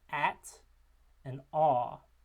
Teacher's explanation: we have low vowels in which the tongue body is low in the mouth.